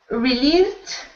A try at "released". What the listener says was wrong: Yep, perfect. Perfect.